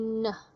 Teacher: dia memang nasal mannernya, tapi kemudian place-nya adalah alveolar